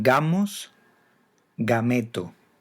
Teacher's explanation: Delante de A y O es oclusiva sonora